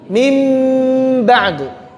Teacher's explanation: kebanyakan ulama membacanya dengan merapatkan bibir secara lunak